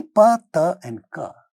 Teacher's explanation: they are all voiceless stop sounds